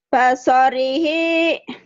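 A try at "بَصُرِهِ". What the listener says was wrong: Tuh, kedengarannya kayak pasorihi ya. Padahal mungkin maksudnya basorihi. Ya, yang jelas artikulasinya.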